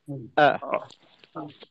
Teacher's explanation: হামজার উচ্চারণ হইল আ, আ মাখরাজে একটু চাপ দিয়ে তারপরে উচ্চারণটা করে আ।